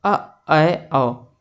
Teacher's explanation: तो आ जब हम बोलते हैं तो हमारा मुख पूरा खुल जाता है, और अर्धविवृत यानी हमारा मुंह जब आधा खुला रहता है, अ ऐ औ। तो ये इस मुख विवर खुलने के आधार पर 4 प्रकार के स्वर हो गए।